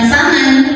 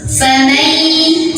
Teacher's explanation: Famai ada idgham bi gunnah. Karena ada nun sukun yang bertemu dengan huruf ya, maka cara bacanya masuk sambil dengung. Artinya nun sukun tidak terbaca jelaskan, bukan faman, tapi kita langsung fokus ke ya, masuk.